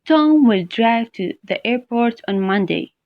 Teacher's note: I just read that in a very neutral tone of voice without any stress on the sentence.